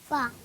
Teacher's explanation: ऊपर के दांतों के किनारे और निचले होठ के तर हिस्से से